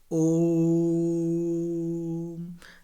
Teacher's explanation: जब हम ओम को उच्चारण करते हैं बच्चों, देखो 3 मात्रा का समय लगता है। ओम, समय लगा दिया ना मैंने उसमें। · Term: त्रिमात्री स्वर